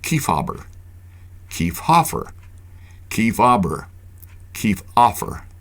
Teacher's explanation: when hobber was the second syllable of a name the H often went silent